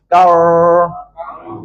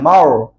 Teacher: lidah ke belakang. Bibir tak nak muncung. Lidah belakang saja. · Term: ra tebal